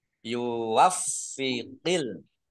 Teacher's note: Faknya dibaca double, ada tasdidnya.